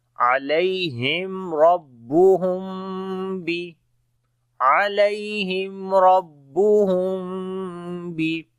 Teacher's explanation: اخفائے شفوی ہوگا، میم کی آواز ناک میں چھپا کر پڑھیں گے